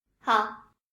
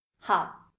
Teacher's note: This isn't something that one would put any emphasis on, so the most natural way to say it is in a half-third tone